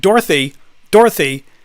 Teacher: Dorothy is like two syllables more or less it's like two and a half at best